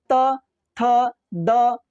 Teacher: ये डायरेक्टली आपके ऊपर के दांत से टकरा के जुबान आवाज निकालता है